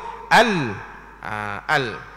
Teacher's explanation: kita sebut al tu a tu dengan nipiskan A dan kita matikan sungguh-sungguh lam